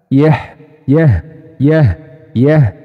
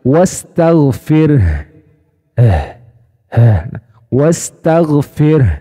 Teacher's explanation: dari sifat Ha ini memiliki sifat Hamas jadi mengalirnya nafas jadi ketika tangan kita diletakkan di depan mulut maka ada hembusan nafas yang keluar